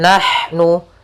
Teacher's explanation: ada huruf ha huruf ha yang dia ha kecil. Makhrajnya dari tengah tenggorokan kita, tengah tenggorokan.